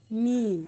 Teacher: दोनों होठ मिलकर मीम की अदायगी होती है।